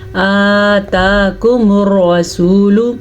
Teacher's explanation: حمزہ کے اوپر بھی کھڑی زبر ہے اور تا کے اوپر بھی کھڑی زبر ہے، تو اس لیے ہم دونوں کو کھینچ کے پڑھیں گے آتاکم الرسول. را کو پر پڑھنا ہے کیونکہ را کے اوپر زبر ہے، اور سین پیش واو سو، واو مدہ پڑھنا ہے کیونکہ واو ساکن سے پہلے حرف کے اوپر پیش ہے.